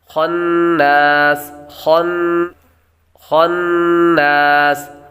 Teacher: آگے نون مشدد ہے، نون مشدد پر غنہ ہوگا، سین حروف صفیرہ میں سے، اور جب وقف کریں گے تو مد عارض ہوگی۔ · خا حروف مصالحہ میں سے ہے اس لیے اس کو پر پڑھیں گے۔ حروف مصالحہ وہ حروف ہیں جن کو ہمیشہ ہر حالت میں ان کو پر پڑھا جاتا ہے۔